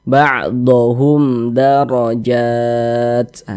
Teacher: Setelah huruf mim sukun ini, maka hukumnya izhar syafawi. Baca pendek saja, tidak didengungkan.